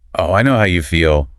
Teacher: with the stress on feel to show she really understands